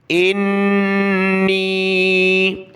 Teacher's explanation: نون پر غنہ کرنا ہے اور مد کرنا ہے، کھینچنا ہے